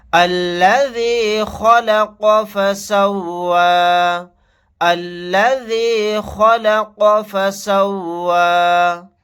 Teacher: خا کو اور قاف کو یہاں پر دونوں کو موٹا یعنی پر پڑھیں گے